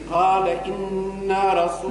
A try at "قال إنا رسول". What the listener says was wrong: لا أنا عملت لنا خطأ قال إنا رسول ما تمدش النون فيها الغنة فقط إنا رسول